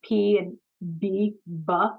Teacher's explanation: all the way on the outside of our mouths we have the bilabial sounds like like P and B buff right we make them with